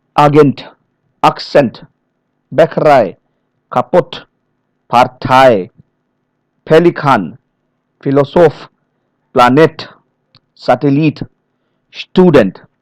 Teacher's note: many foreign loan words, usually of French origin, okay, they stress the final syllable as in the source language